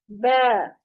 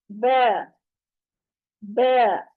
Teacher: अब बा जो है, इसको अदा करते हुए इसकी आवाज मोटी नहीं करनी, हमने बा नहीं करना। होंठों के अंदरूनी गीले हिस्सों को आपस में मिलाकर अलहदा करने से ये ब अदा होगा। होंठों को चीरते हुए, जैसे हम स्माइल करते हैं ना, पिक्चर बनवाते हुए हम कहते हैं स्माइल, तो वो स्माइल जो करते हैं उस अंदाज में आपने होंठों को ले जाना है जब इसको अदा करना है।